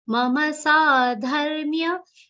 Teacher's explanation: Mama, both ma sounds will be complete, not mam sadharmya.